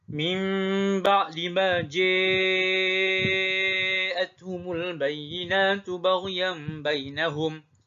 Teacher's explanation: Dilakukan ja'a dengan 6 harakat dan juga imalah